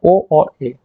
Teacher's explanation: अर्ध संवृत स्वर जानते हैं, बोलते समय मुख बहुत थोड़ा खुलता है, यानी कि थोड़ा सा खुलता है, कोई दिक्कत वाली बात नहीं है।